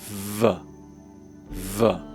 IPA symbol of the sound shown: v